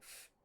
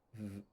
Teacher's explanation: In this case, it's voicing that marks plurality. So F is an unvoiced sound, whereas V is voiced. So F, V, are the same sound, except V, your voice box vibrates as you make the fricative, and then carries on into the vowel.